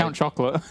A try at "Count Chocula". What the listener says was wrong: You said Count Chocolate, yeah.